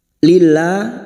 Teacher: lam jalalah yang didahului kasrah, kita baca tarkik. Lillah, lanya kita panjangkan dua harakat, alif kecil di atas.